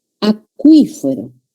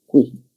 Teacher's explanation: Acuífero, la sílaba tónica es qui.